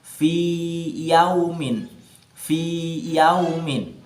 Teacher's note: dia tidak boleh dibaca idgham karena akan menghilangkan panjangnya atau matnya. Maka dia dibaca tetap dipanjangkan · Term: idhar